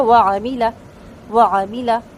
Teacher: مل میں جو لام ساکن ہے اس کو ہلائیں گے نہیں، اور کسرہ جو ہے دونوں یعنی جو زیر ہیں خا اور را کے ان کو بالکل باریک پڑھیں گے، میم کا زیر بھی بالکل باریک پڑھا جائے گا یعنی معروف کر کے۔ وعاملہ، واو مکمل ہونٹ گول کر کے، عین کو وسط الحلق سے اور حرکات کو لمبا نہیں کرنا